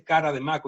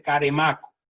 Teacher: Cada vez que la D está en posición intervocálica, bueno, es que hoy nosotros también la hemos elidido. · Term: elisión